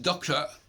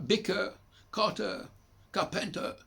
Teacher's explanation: Dans bien des cas, les anglophones ne prononcent pas le R final.